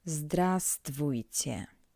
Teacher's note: As I already said, in Russian when reading all letters are pronounced, but this word is an exception. We don't pronounce the highlighted letter V.